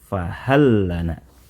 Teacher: bacaan Gham yaitu menggabungkan dua huruf menjadi satu ditulisnya fahal Lana ada dua huruf lam namun dibaca dengan cara digabungkan menjadi satu huruf lam saja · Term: bacaan Idgham, idgham